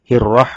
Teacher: র মধ্যে জবর হওয়ার কারণে র মোটা করে পড়তে হবে